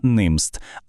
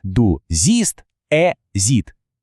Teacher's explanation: Не коротке і, як у німст, а довгий протяжний звук і.